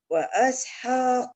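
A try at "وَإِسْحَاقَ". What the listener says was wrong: Wa isha bukan wa asha.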